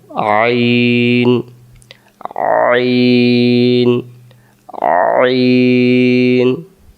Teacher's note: আইন অক্ষর হলকের মধ্য থেকে একটু চেপে পড়তে হয় হলক মানে গলা আর হামজা অক্ষরের মাখরাজ হলো হামজা অক্ষর হলকের